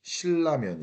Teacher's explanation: 리을이 자기랑 비슷하게 생긴 니은을 리을로 변신시키는 겁니다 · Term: 유음화